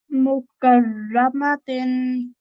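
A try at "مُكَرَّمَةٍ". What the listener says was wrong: Actually, almost perfect. Just a little bit fraction longer on the ra. One more time.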